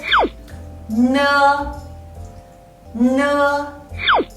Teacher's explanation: When you pronounce ne, the airflow will come from your nose. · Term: nasal initials